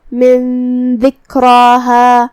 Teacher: کلمت من ذکراہا، یہاں بھی نون ساکن ہے، پھر حرف الدال ہے، تو یہاں جو کہ حکم الاخفاء ہوا تو ہم یہاں نون کو چھپاتے ہوئے اور غنہ کے ساتھ یہ حکم کو ادا کریں گے